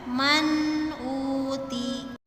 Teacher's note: Tapi hati-hati jangan sampai ada pantulan di huruf nun sukunnya.